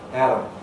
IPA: ˈæɾəm